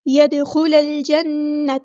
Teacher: لام یہاں پر لام قمریہ، اس کو ہم ظاہر کریں گے. يدخل الجنة، نون پہ گمنہ زمانی ہو رہا ہے، ایک الف کے برابر رکیں گے تاکہ زبر کو ہم لمبا نہیں کریں گے.